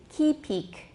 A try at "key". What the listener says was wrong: Oh, don't put the stress on the second syllable. Keep the stress on the first syllable.